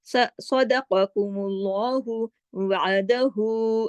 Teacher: اب دیکھیے یہ الٹا پیش آ گیا. الٹا پیش جو ہے وہ قائم مقام ہے واو مدہ کے, واو مدہ کے قائم مقام ہے, 2 حرکات پڑھا جائے گا اور اس کے اوپر پھر ایک چھوٹی مد اور بھی لگی ہوئی ہے.